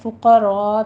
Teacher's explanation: حل فقراء میں لام کے اوپر قلقلہ نہیں کرنا، قاف کو پر پڑھتے ہوئے آگے را بھی پر پڑھی جائے گی، اور مد متصل واجب ادا کرنی ہے، یہاں پہ 5 کاؤنٹ کرنا ہے۔